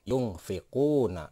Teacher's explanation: Nah, huruf fa ini adalah huruf ikhfa. Jadi nun mati ketemu dengan huruf ikhfa yang ada di depannya, maka itu akan disebut ikhfa dengan bunyi eng. Jadi cara membacanya adalah yungfiquna.